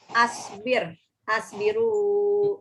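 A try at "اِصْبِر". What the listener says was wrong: Kayaknya nggak pernah saya ajar pakai A kalau fi'il amar. Kalau bukan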